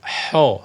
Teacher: dengan getaran tidak boleh tidak boleh Kho tidak boleh ko tapi dia lebih dekat ke huruf ha namun diberi sifat istilla diberi sifat tebal saja